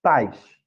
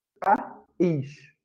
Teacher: Então, aqui a gente tem as consoantes, o P e o S, a vogal, o A e o A, mas tem uma diferença entre essas duas palavras. Esse I aqui de pais, ele é uma semivogal. E esse I aqui de país, ele é uma vogal.